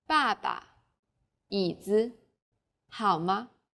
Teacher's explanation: there's a neutral tone this is very light weak and short